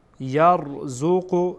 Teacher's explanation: را خودش ساکنه ما قبلش فتحه داره، بنابراین را پر خوانده میشه. یر نمیگین یر باریکه.